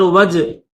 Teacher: جیم حروف قلقلہ میں سے اس کو ظاہر کریں گے